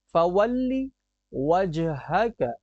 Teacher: وجہک کی جیم میں ہم قلقلہ کریں گے